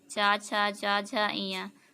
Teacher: चा वर्ग में जितने आते हैं चा से इया तक, चा छा जा झा इया, तो ये जीभ से तालु को छूती है।